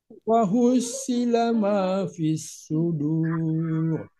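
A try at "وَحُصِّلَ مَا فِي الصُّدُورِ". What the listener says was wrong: Ya, datar. Jangan dulu turun. Wa hussila ma fis sudur.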